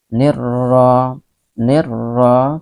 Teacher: kita leburkan alif lamnya ke dalam huruf syamsiyah yang di depannya. Jadi seolah-olah alif lam ini tidak dibaca, ya. Nirra, ingat bahwa ra tetap dibaca tafkhim tebal karena dia berbaris fathah, ya. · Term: alif lam syamsiyah